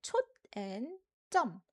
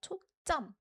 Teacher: when reading this, we put an emphasis on the second syllable, jum. So, it sounds like chok and jum. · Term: strong jum sound